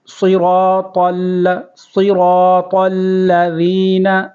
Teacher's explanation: یہ صاد کو پر کریں گے، اور را کو بھی پر کریں گے · طا کو لام کے ساتھ ملائیں گے، لام کے اوپر تشدید ہے تو لام کو واضح پڑھیں گے